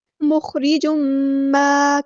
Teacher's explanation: یہاں پر تنوین کے بعد میم آئے، ادغام معلوم نہ ہوگا یعنی ادغام ناقص